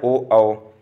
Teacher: कंठोष्ठ मतलब कंठ प्लस ओठ, और कंठ मतलब केवल कंठ से, केवल कंठ से अ आ बोला जाता है, और कंठ और ओष्ठ दोनों को मिलाकर ओ औ बोला जाता है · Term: कंठोष्ठ स्वर